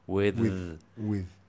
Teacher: It's not with, as in theta, it's th, it has a vibration.